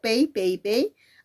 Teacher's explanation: Y te das cuenta cuando digo pei, pei, pei, ahí está apareciendo qué cosa, 2 vocales en una misma sílaba. La E, que es una vocal abierta, y la I, que es una vocal cerrada, nuevamente haciendo aparecer a un diptongo de tipo decreciente.